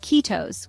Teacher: Kiitos is pronounced kiitos with the emphasis on the first syllable. The I sound is similar to the E in C, while the O sound is like the O in lot.